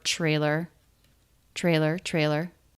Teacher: TR cluster being pronounced as CHR